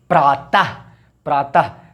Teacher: उच्चारण एक झटके में विसर्ग का होगा